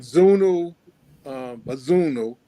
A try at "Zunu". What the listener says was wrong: Well done, yeah, correct, yes, yeah.